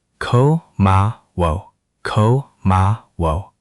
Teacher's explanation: the ah at the end should feel rounded, like you're almost making a small o shape with your lips